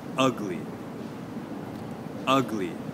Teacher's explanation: for ugly okay we will put the stress on the first syllable